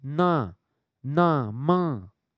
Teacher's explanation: जितने भी 5 पंचमाक्षर हैं वो सब नासिक के हैं